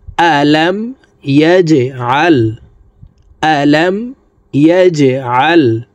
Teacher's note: জিম কলকলার হরফ নিচের দিকে ধাবিত করে ধাক্কা দিয়ে উচ্চারণ করব